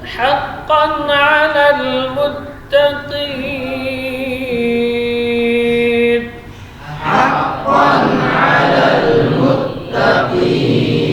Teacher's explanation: tanwin ketemu dengan ain, ini izhar. Artinya menjelaskan bunyi tanwin. Huruf ain, huruf yang keluar di tengah tenggorokan, tawassut.